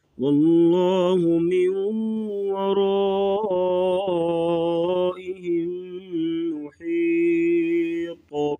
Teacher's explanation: لفظ اللہ کے لام سے پہلے زبر ہے تو لام کو پور پڑھیں گے